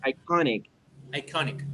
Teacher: you have the stress on the second syllable